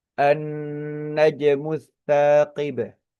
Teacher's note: Ee annajmu di sini alif lam bertemu dengan huruf nun. Lam sukunnya tidak tidak dibaca secara gamblang. Justru melebur kepada huruf nun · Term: idgham syamsiyah